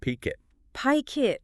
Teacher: It's chaining sounds together to save aerodynamic energy. So the K at the end of pick naturally glides over to become the starting consonant of the next syllable. Phonetically, you aren't saying pick it, you're saying peek it. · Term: catenation